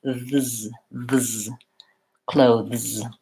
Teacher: I have to move from the TH to the Z